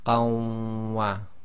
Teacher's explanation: you effectively drop the noon sakin, so you end up with ma, and that joins to the lam with shadda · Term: idghaam